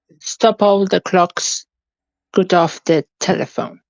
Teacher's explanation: The poem is written with mainly in iambic pentameter, which means each line has 10 syllables with alternating unstressed and stressed beats